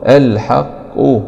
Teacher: نقف عليها بالسكون العارض مع القلقلة الكبرى